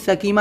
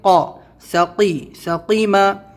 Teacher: اس کو سکیمہ نہیں بولنا ہے، یہاں پہ قاف ہے تو آپ کو سختی سے اپنے تالو سے آواز نکالنا ہے اوپر سے